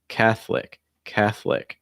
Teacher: next one catholic catholic so it's not catholic it's just catholic that o will be removed in terms of pronunciation keep it two syllables